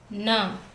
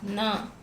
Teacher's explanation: From the middle of the tongue we pronounce this na.